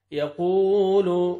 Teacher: قاف کو موٹا کر کے پڑھیں گے اور واو مد ہے، آپ نے ایک الف کے برابر قاف کو کھینچنا ہے